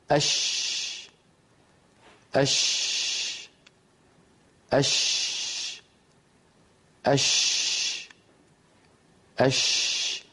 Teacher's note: الشين تنشأ من وسط اللسان لأنها مهموسة ولا عمل للوترين الصوتيين فيها، لا جهر فيها